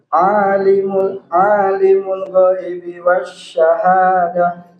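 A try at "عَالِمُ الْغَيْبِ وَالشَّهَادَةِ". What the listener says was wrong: Huruf lam sukun itu harus diperjelas, tidak boleh dipercepat. Alimul ghaibi wasyahadah. Jadi alimul jelas. Alimul ghaibi wasyahadah. Jadi setiap alif lam, terutama lam yang dibaca dengan idhar, ya, yakni yang jelas berbunyi al, maka itu harus diperjelas, tidak boleh dipercepat, ya, seperti itu.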